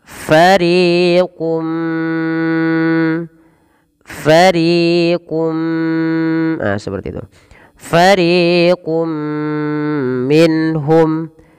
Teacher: ditahan suara nya sepanjang dua harokat karena disertai dengan gunnah, maka dinamakan dengan idgham bi gunnah